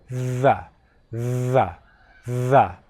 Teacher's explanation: Your tongue actually vibrates a little bit as you make the sound. 'The' You should be able to feel your tongue vibrating on your teeth /ð/ You can feel it right in there.